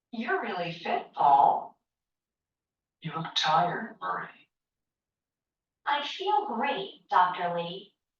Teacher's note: There is usually falling intonation and a pause before the name.